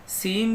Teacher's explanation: सीन जो है य इसको नॉर्मल पढ़ेंगे और इसमें थोड़ी सीटी की आवाज आएगी